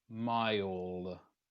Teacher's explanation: they're not moving their tongue far enough to create the end of the L sound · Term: L sounds